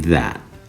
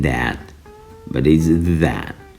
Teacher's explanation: Closer to a soft D than anything else, as in that